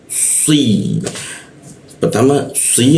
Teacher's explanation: ketika kita membaca si itu ada hentakan ke bawah